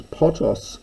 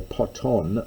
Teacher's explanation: There's potos with the accent on the first syllable, which is a drinking party, and there's potos, rather I should say poton, neuter, with the accent on the second syllable